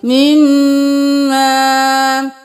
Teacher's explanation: میم کے اوپر صرف زبر نہیں ہے، ساتھ الف بھی ہے، تو ہم اس کو ایک الف کے برابر کھینچتے ہوئے پڑھیں گے